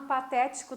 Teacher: a antepenúltima sílaba de cada uma é a sílaba tônica, é a sílaba forte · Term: proparoxítonas